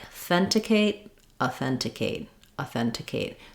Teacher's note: on the stress syllable that would sound like authenticate authenticate authenticate so you can hear my a is not long · In authenticate, the stress is on the then syllable, and it has a clear vowel there. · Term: reduced vowel